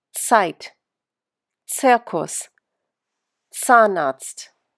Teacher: In German, Z always sounds like ts, like the end of the word cats.